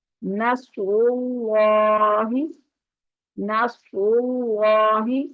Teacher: را بھی پر ہے اور اللہ کا لام بھی پر ہے